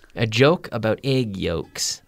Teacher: Joke with a J, which is almost like a CH, and you activate the vocal cord.